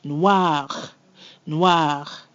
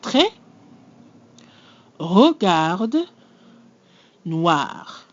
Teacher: The R always comes from the back of the throat.